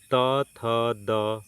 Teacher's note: जीभ सीधे दांतों के पिछले हिस्से को छूती है।